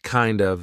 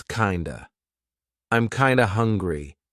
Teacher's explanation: Kinda instead of kind of. Again, we're turning that of into a schwa. So it's not kind of, it's kinda.